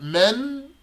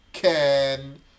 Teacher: so the tongue goes to the front men and then the tongue goes to the back can